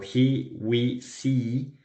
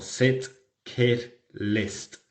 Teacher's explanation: tenemos la vocal E tensa en palabras como he, we, see y la E relajada